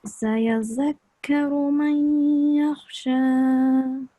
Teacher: Very good nasalization of the noon, sakina.